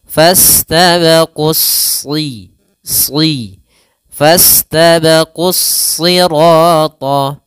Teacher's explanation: di sini huruf shadnya dibaca dengan tebal karena SH salah satu hurufnya sifat nya adalah istila dan yang